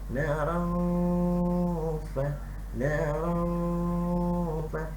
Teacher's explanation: mesti dengung dua harakat. Dengung tu dua harakat.